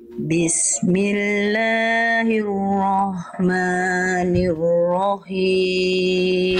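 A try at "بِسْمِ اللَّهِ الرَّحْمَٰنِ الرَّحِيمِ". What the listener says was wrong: H kecilnya kurang Bunda. Bismillahirrahmanirrahim. Dari tengah tenggorokan nafasnya berbisik. Bismillahirrahmanirrahim.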